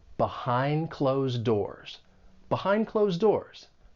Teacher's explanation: Both of the D sounds in behind and closed, they're going to elide. They come between two consonant sounds and and it's like they get muted and you just don't really hear it.